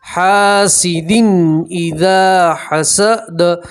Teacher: تنوین کو ظاہر کر کے صاف کر کے پڑھیں گے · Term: تنوین کا اظہار